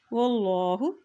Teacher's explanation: अल्लाह का नाम मोटा अदा किया जाएगा क्योंकि अल्लाह के नाम से पहले ज़बर है